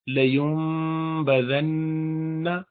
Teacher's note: لیوم کر کے تھوڑا سا اس کو غنہ بھی اس میں کریں گے، اور آگے نون مشدد چونکہ آ رہا ہے، شد والا نون، اس پہ تو غنہ کرنا ہی ہے، اسی لیے لیون بزن، لیوم بزن، ہونٹوں کو بند کریں گے پورا۔